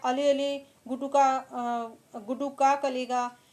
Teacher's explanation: अली शब्द में र स्थान पर ल का प्रयोग किया गया है